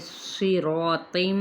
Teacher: صاد زیر کے ساتھ ہے، ہر کنڈیشن میں یہ حروف متعالیہ پر ہی یعنی تفخیم کے ساتھ ہی ادا کیا جاتا ہے ، را الف مدہ کے ساتھ ہے، ایک الف کے برابر